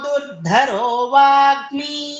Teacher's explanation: ಮೊದಲನೆದು ಅಲ್ಪಪ್ರಾಣ ಎರಡನೇದು ಮಾತ್ರ ಮಹಾಪ್ರಾಣ